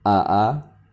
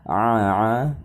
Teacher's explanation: huruf hamzah itu termasuk dalam huruf aqsal halqi, yaitu keluarnya huruf dari tenggorokan bagian bawah. Huruf ain termasuk dalam huruf wasatul halqi, yaitu keluarnya huruf dari tenggorokan bagian tengah